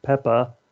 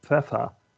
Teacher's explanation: the proto-germanic voiceless stops turning into either affricates or fricatives in the southern german dialects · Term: old high german consonant shift